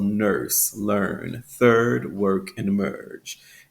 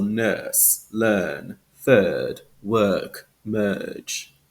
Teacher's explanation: in general American English we have that fully pronounced R sound so nurse learn third work and merge and in British English we have that lengthened vowel sound